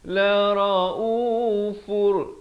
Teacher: La raufur, idgham bila gunnah, daripada la raufun jadi la raufur, masuk tanpa dengung